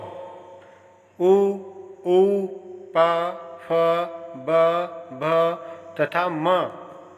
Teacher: ओष्ठो उ, ऊ, प, फ, ब, भ तथा म का उच्चारण स्थान ओष्ठ है। ओष्ठ से बोले जाने के कारण इन वर्णों को ओष्ठीय कहा जाता है